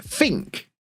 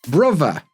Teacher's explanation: the th sound becomes f, and we get think. Brother, the th in the middle, becomes v